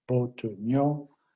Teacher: you have 3 syllables, but only 2 tones